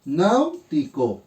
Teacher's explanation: Sílaba tónica, recae en nau.